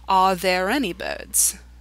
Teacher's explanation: so notice because in this sentence any is after there then because you have to link those two words together the r is pronounced